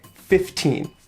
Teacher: you could put the stress on the second syllable 15 but most common i think is to put an even stress on both syllables